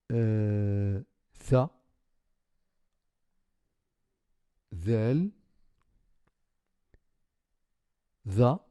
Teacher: Alors, pour ces trois lettres en bleu, tha, ذال, ذا, le bout de la langue est placé sous les incisives du haut